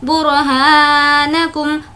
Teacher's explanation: را کو پر پڑھیں گے کیونکہ را سے پہلے پیش ہے